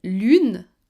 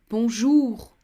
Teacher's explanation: U, like in lune, round lips, tense mouth. OU, like in bonjour, more relaxed.